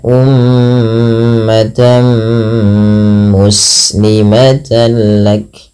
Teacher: tanwinnya dimasukkan ke huruf mim, tidak lagi terdengar bunyi ummatan muslimah, tapi diganti dengan huruf mim, dan ini kita kenal dengan bacaan idgham bi gunnah.